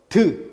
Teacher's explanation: 윗잇몸과 혀끝이 만나는 것인데 디귿을 발음할 때는 윗잇몸에 혀가 이렇게 만났다가 이 안에 공기가 압축됐다가 딱 떨어지면서 터지면서 드 하는 소리가 나는 겁니다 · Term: 파열음